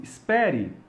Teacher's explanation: Em português, o nome desse som é cheva, que são palavras terminadas com E de escola. A gente não pronuncia como um E, a gente pronuncia com algo entre um E e um A. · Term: schwa